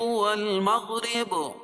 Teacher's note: قل للہ المشرق والمغرب، قل قاف کو پور پڑھیں گے، للہ اللہ کے لام سے پہلے زیر ہو تو اللہ کا لام باریک پڑھا جائے گا، مشرق را باریک پڑھی جائے گی، مغرب را باریک پڑھی جائے گی اور با پر قلقلہ ہوگا وقف کی صورت میں